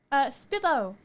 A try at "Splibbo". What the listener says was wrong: It's got an L in there. Splibbo.